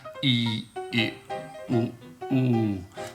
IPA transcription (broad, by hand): iː, ɪ, ʊ, uː